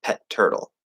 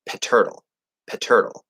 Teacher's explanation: you're gonna stop or hold the first T, pet, and then you're gonna push out the second T, turtle, and we get this little break between them: pet turtle.